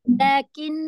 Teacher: Ni ada sabdu kena nun dia kena dengung sikit lah Ustaz, dengung.